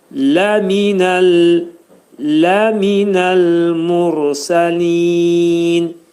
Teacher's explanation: Lə incə samit, mim hərfi incə samit, nun hərfi incə samitdir. Burada ləminəl dedikdə ləmin demək məxrəcini saxlayırıq.